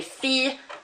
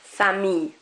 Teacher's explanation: So fille rather than fille, famille rather than famille, and gentil rather than gentille. We are not pronouncing those L's outright.